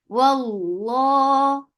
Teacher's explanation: For fatha upon jaws attached with lafz jalala. Lafz jalala will be heavy because there is fatha before it.